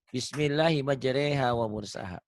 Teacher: Ini ya imalah. Asalnya ro jadi re